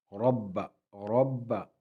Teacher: را کو پر پڑھیں گے، را پر زبر ہے